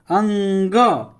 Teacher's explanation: अंग का उच्चारण स्थान कंठ और नासिका है। अंग कंठ से बोल रहे हैं और नाक से बोल रहे हैं। अंग कहता है कि नकिया आ रहा है, तो अंग कंठ से और नाक से, तो अंग कंठ और नासिका से इसका उच्चारण स्थान है।